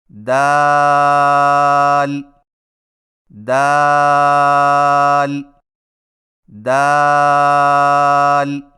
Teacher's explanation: دال کی ادائیگی میں زبان کی نوک کو ثنایا علیہ کی جڑ سے لگا کر باریک آواز میں پڑھیں